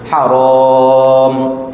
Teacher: Kita panggil mad asli lah kan, walaupun dibaca dengan qasar cuma 2 harakat. Asalnya 2 harakat, tapi kerana berhenti maka ada sebab mendatang. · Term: mad arid lisukun